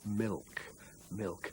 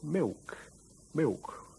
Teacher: again made with the tip of the tongue milk milk but what people often do nowadays is not use the tongue tip at all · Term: kind of w sound